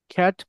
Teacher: The টি is pronounce but the air flow is stop without releasing. দেখেন খেয়াল করেন, যখন একটা টি বললেন, এই টি এর সাথে একটা সাউন্ড আছে, একটা ফ্লো আছে, এই যে আমি বলছিলাম একটা ফ্লো কিছুক্ষণ আগে স্ট্রেসের কথা বলার সময়, তো এই ফ্লোটা এটা আসবে না। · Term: স্টপ টি